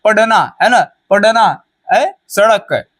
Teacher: आपकी जो जीभ है ऊपर की ओर जाती है और झट से मूर्धा को टच करके वापस नीचे आ जाती है, इसे कहते हैं द्विगुण या फिर उत्क्षिप्त, ठीक है।